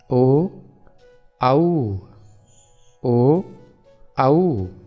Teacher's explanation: ओदौतोः कंठोष्ठम, अर्थात जिन वर्णों का उच्चारण स्थान कंठ एवं ओष्ठ दोनों होता है उन्हें कंठोष्ठ वर्ण कहते हैं। जैसे ओ, कंठ तो है ही लेकिन होठ भी थोड़े से सिकुड़ते हैं।